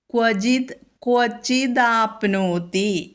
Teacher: അവിടെ യാതൊരു വ്യത്യാസവുമഇല്ല ക്വചിത്ത് ക്വ പ്ലസ് വക്വ ക്വചിത്ത് ആണ് പദഛേദത്തിൽ വരുക അത് ആപ്നോതി എന്നുള്ളതായിട്ട് കൂടിച്ചേരുമ്പോൾ അവിടെ മൃദുവായ ദ വരും